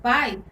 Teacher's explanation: na palavra pai a letra a ela representa aí o fonema mais forte e a letra i é a semivogal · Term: decrescente